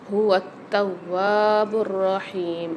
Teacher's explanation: تا کے اوپر مشدد آ رہی ہے اور واو کے اوپر بھی، تو دونوں کو سختی اور جماؤں کے ساتھ پڑھیں گے ملا کر۔ هو التواب الرحیم، اور واو کے ساتھ الف مد بھی آ رہی ہے، تو یہاں پر بھی 1 الف مقدار کھینچ کے پڑھیں گے۔